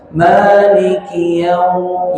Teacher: Maknya panjangkan, dua harakat, mat tabi'i.